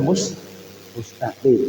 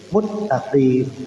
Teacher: Kalau seandainya ada orang baca Fatihah dia mengidghamkan huruf yang sebenarnya tidak harus diidgham. Seperti halnya dia mengucapkan al-mustaqim jadi al-muttaqim.